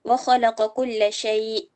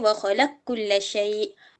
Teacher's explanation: yudghamu al-qaf fil kaf. Diidghamkan qaf ke dalam kaf.